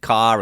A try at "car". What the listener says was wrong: Well, yeah, the way you're saying the ca, it's ca. It's more rounded than that. The R is coming in, but the R is just pronounced differently. So it's not just ca like C-A, it's C-A-H. So it's ca.